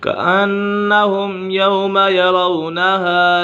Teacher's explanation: मीम साकिन के बाद हर्फ बा और बीम के अलावा कोई भी हर्फ आ जाए तो मीम साकिन में इजहार शफवी होगा, यानी गुन्ना नहीं करेंगे